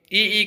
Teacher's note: ई का उच्चारण स्थान कौन सा हो जाएगा, तालु